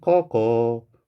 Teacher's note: 쌍기역이 그대로 뒤로 넘어가서 발음이 됐네요. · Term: 연음